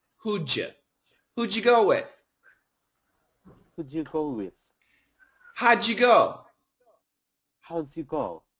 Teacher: We know that the D and the Y, we can get a J. So the typical pronunciation is who'd you go with?